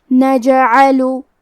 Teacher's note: کلمت نجعلو میں جیم پہ جزم ہے تو ہمیں جیم کو قلقلہ سے پڑھنا ہے اور قلقلہ کا معنی ہے حرف ساکن کو ہلانا، تو ہم حرف الجیم کو ہلاتے ہوئے یہ کلمہ کو پڑھیں گے.